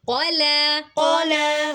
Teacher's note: कफ को मोटा लाम को बारीक